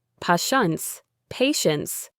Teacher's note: Pay attention to the first T. It makes a sh sound, patience, patience.